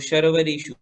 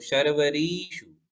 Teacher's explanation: शर्वरीषु और शर्वरीषु देखो अंतर पड़ता है ह्रस्व और दीर्घ मात्रा में। यदि हम री को ह्रस्व पढ़ेंगे तो शर्वरीषु, और यदि दीर्घ है जैसे कि इसमें दीर्घ है तो शर्वरीषु